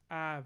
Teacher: we get this a vowel this low front vowel